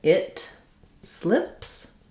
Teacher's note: when we move and lower the tongue for the I vowel of slip, it's a lax vowel and the tongue is a little bit lower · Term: lax I vowel